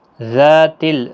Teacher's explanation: ذا الف مدہ ہے، 1 الف کی مقدار کے برابر کھینچے